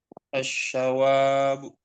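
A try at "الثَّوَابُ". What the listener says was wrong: Nah, itu huruf tsa ya, Pak ya. Nah, jadi enggak tebal. Bukan assawabu, bukan tapi assa.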